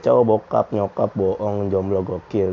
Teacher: Oh ini kayak vokal belakang Tengah bulat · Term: vokal O